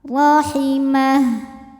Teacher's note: Huruf ra dibunyikan secara tafkhim karena harokatnya di atas, maka dibacanya tebal.